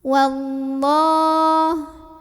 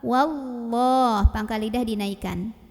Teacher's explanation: Ada lam jalalah yang dibunyikan secara tafkhim. Karena huruf sebelumnya waw berbaris fathah, maka bacanya tebal.